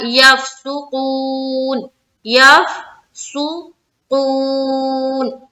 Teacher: यफसुकून, यफसुकून, ऊ में खींचेंगे, वाव मद्दा का कायदा है।